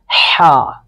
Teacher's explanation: حا بھی حلق سے ادا ہوتا ہے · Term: حروف حلقی